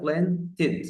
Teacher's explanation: نطقت الاي قبل الدي، علشان عمري ما ينفع انطقها دي لوحدها او تي لوحدها